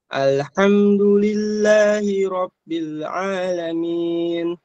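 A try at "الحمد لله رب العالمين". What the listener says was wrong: Alhamdulillahi Rabb. Coba lebih tebal roknya. Ro.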